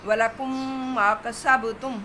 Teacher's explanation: یہ ولکم ما جو ہے یہ ادغام شفوی ہے، دونوں ہی شفوی حروف ہیں، میم میں مدغم ہو رہی ہے، ادغام شفوی ہے۔